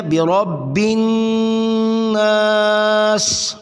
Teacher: بی جلدی سے، رب را کو موٹا، بن نون مشدد غنہ ضروری ہے